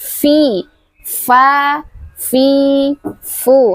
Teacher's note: Ingat, huruf fa adalah huruf syafatain, yaitu ee makhrajnya perut bibir bawah bertemu dengan ujung gigi seri atas. fa dan sifatnya adalah hames dan rahawah, yaitu suaranya mengalir, ee hembusan udaranya juga mengalir.